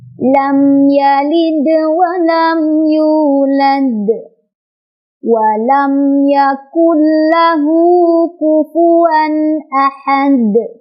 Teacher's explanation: Jadi hati-hati untuk di surat Al-Ikhlas ini ujung-ujung ayatnya itu ada qalqalah kubra, jadi harus dipantulkan besar, harus konsisten, semuanya harus ada pantulannya ya.